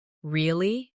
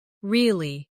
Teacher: With a rising tone to show surprise.